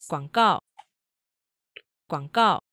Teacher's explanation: three all right so here is a three four combination again you'll notice there's the half third tone